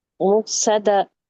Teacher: हमजा पे सकून है, यहाँ झटके की आवाज आएगी. मुक़्सदा, स्वाद हैवी, और बोलता जब हम स्टॉप करते हैं तो हाँ में बदल जाता है.